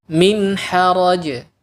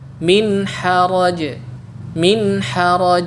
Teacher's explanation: nun sukun yang dibaca jelas pada potongan ayat ini gunahnya sangat kurang ada tapi sedikit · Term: gunah yang kurang, ghunnah yang kurang